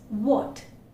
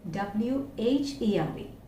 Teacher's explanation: the tongue is going backward, and the back part of the tongue is literally raised. നിങ്ങളൊന്ന് പറഞ്ഞു നോക്കിയേ, v v നാക്കിൻ്റെ പുറകുവശം അകത്തേക്ക് ഇങ്ങനെ വലിയുന്നുണ്ട്, ഇത് ഫ്രണ്ടിലൊന്നും സ്പർശിക്കുന്നില്ല.